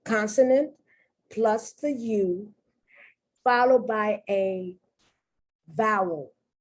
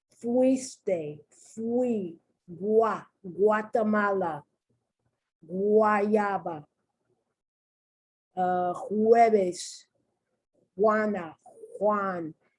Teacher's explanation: The U takes on a W sound.